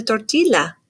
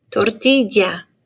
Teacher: So that double L makes a y sound.